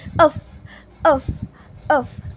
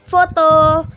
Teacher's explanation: Nah, f itu merupakan huruf konsonan dari f, dan f itu merupakan huruf konsonan dari v, dan w itu adalah w. Nah, bunyi konsonan f itu ada gesekan dan juga desisan dari gigi atas dan juga bibir bawah. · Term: labiodental